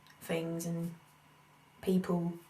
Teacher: So I just did an F for a TH sound.